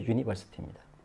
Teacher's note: 이하고 우를 합쳐서 길게 해야 됩니다. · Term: 이중모음